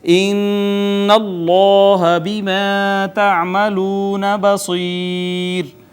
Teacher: حرف مدہ کے بعد سکون عارضی آ گیا، لہٰذا مد عارض · نون مشدد غنہ کیا، اس میں جلالت، پھر ما قبل مفتوح موٹا کر کے پر کر کے پڑھا ، مفخم پڑھا، الف المدیہ صغیرہ، الف مدہ ہے، واو مدہ